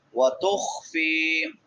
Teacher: خا حروف حلقی میں سے، حلق کے درمیان میں سے، وسط حلق سے